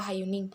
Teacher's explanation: bunyi penghambat dorsovelar bersuara